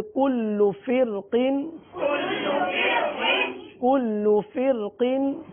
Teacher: کل فرقین کی را کو پر بھی پڑھ سکتے ہیں اور باریک بھی پڑھ سکتے ہیں۔ پر اس لیے پڑھیں گے کہ را ساکن کے آگے حرف مستعلیہ میں سے حرف آ گیا، اور باریک اس وجہ سے بھی پڑھ سکتے ہیں کیونکہ جو حرف مستعلیہ ہے وہ مکسور ہے، یعنی دو زیر کی تنوین ہے، اس لیے اس کو باریک بھی پڑھ سکتے ہیں۔